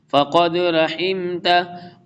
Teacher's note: فقد قلقلہ کریں گے، قاف موٹا ہے اور اس کے بعد دال کے اوپر قلقلہ کریں گے۔